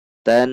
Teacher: Ta satu ketuk masuk ke alif lam samsiyah huruf nun. Karena huruf nun maka dibaca gunnah, harus dengung. Perhatikan tan, harus dengung, tidak boleh dibaca tan.